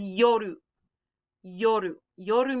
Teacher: r or say uh put your tongue halfway between the r and the l maybe like where you would put your tongue for a d it's just a tongue flap